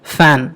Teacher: సో ఇక్కడ ఏం జరుగుతుందంటే కింద ఉన్నటువంటి పెదవి పై పళ్ళను తాకుతుంది రైట్. అలా తాకడం వల్ల ఈ కాన్సనెంట్ మనకి ఏర్పడుతుంది. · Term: లేబియో డెంటల్